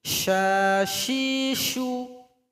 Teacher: Kalau dia yang bertitik 3, shin, lebih banyak anginnya.